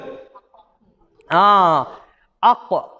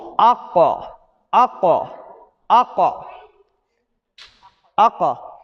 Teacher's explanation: தொண்டையுடைய ஆரம்ப பகுதியும் வாயுடைய இறுதி பகுதியிலேயே அந்த நடுவுல இருந்து அந்த காஃப் உச்சரிக்கப்படும். அப்ப காஃபை உச்சரிக்கக்குள்ள அந்த காஃப் வந்து பெய்த்து வரணும்.